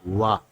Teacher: व का उच्चारण स्थान दंतोष्ठ होगा। व का उच्चार दंत और ओष्ठ से मिलकर बना है।